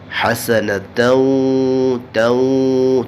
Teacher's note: ربنا آتینا فی الدنیا حسنہ، آتینا، تینا نہیں پڑھنا بلکہ آتینا فی الدنیا حسنہ، ہا کو حلق سے نکالیں گے، وسط حلق سے حسنہ، اور جب حسنہ کو آگے ملائیں گے تو پھر حسنتوں پڑھیں گے، اور یہاں بھی غنہ کریں گے ادغام کی وجہ سے، ادغام مع الغنہ ہوگا، کیونکہ جب بھی نون ساکنہ یا تنوین کے بعد حروف یرملون میں سے آ جائے تو غنہ ہوگا، اور یہاں یرملون میں سے واو آیا ہے حسنتوں توں، تو یہاں غنہ ہوگا۔